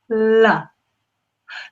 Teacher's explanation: let's now think about how we make L remember I said the tip of the tongue needed to go behind the teeth just at the top of the teeth where the teeth join the gum